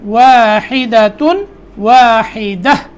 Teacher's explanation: واحدہ، ہا کو صحیح ادا کرنا ہے، ٹھیک ہے. اور دال کے اوپر جب وقف کرنا ہے تو دال کو لمبا نہیں کرنا